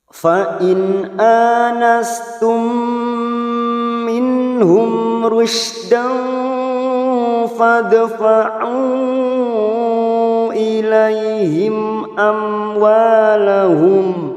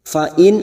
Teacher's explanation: nun sukun bertemu hamzah idhar halqi, kita baca jelas tanpa mendengung. Fa in anastum, ada fathah berdiri atau alif kecil di atas, 2 harokat kita panjangkan.